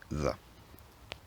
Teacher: the word the is still pronounced with the more standard uh interdental fricative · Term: voiced the